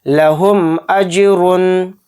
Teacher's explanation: میم ساکن کے بعد یہاں پر حمزہ آ رہا ہے تو اس میں اظہار شفوی کا قاعدہ ہو رہا ہے اور اس میم کو ظاہر کر کے پڑھیں گے